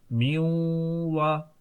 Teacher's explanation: थोड़ी सी नाक में आवाज देकर गुन्ना कर दें, और एक अलिफ की मिकदार हमने गुन्ना कर दी